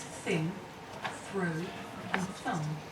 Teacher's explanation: i make the sound by sticking my tongue out just a little bit and blowing air between my tongue and my top teeth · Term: voiceless consonant